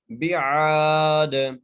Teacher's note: عین کو ایک الف مقدار کھینچ کے پڑھنا ہے اور دال پر قلقلہ کرنا ہے، وقف کی صورت میں دال کو ساکن کر رہے ہیں۔